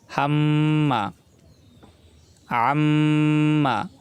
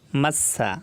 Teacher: এখানে মিমে গুণনা করতে হবে। মিমের উপর যেহেতু তাসদিদ আছে, তাসদিদ থাকলে গুণনা করে পড়িতে হয়।